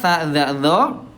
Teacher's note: ini ujung lidah disentuhkan dengan ujung gigi seri atas, tempatnya sama tapi sifatnya beda ya.